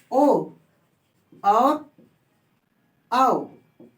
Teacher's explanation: ओ और औ को बोलने में कंठ का प्रयोग हो रहा है और साथ में ओठ का प्रयोग हो रहा है, तो क्या हो जाएगा कंठोस्य।